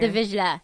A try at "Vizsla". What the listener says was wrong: No, you mean the Vizsla? Vizsla. I thought she said C instead of Z.